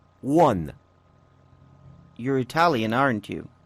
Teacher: notice how the intonation goes down when the speaker is sure of the answer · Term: falling intonation